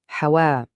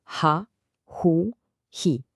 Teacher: L'important c'est vraiment de sentir ce petit souffle qui part de la gorge.